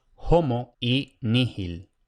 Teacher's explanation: la letra H, que en latín clásico esmerado debía de pronunciarse como una aspiración.